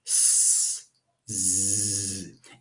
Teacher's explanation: For both of these sounds, the tip of your tongue is touching the bony ridge behind your teeth. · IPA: /s/, /z/